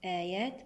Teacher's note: هنا تقدمت الهمزة على حرف المد صار عندنا مد بدل آيات بعد الياء هنا الألف الخنجرية الصغيرة مد طبيعي بمقدار 2 حركات والبدل أيضا 2 حركات آيات هنا تقدمت الهمزة على حرف المد